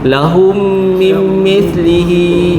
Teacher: Mim bertemu dengan mim. Idgham mislain. Ha masukkan dan dengung dua harakat. Mimlihi nun masuk dalam mim.